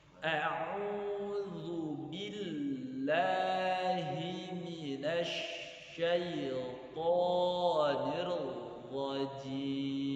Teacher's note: Lambat dan cenderung tidak bernada. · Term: tahqiq